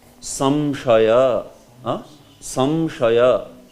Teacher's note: the pronunciation that anuswar brings in always has the sense of m in it. It has a sense of ma, ma which is nasalized, ma, like that.